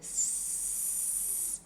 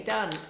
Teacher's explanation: our 'sss' sound is really long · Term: long sound